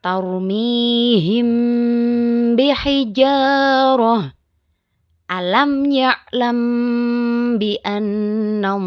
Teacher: syafawi hanya ada satu yaitu ba cara membaca Ifa syafawi yaitu dengan suara yang samar antara mim dan ba pada bibir kemudian ditahan kira-kira dua harakat